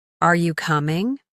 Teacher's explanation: Your voice goes up at the end.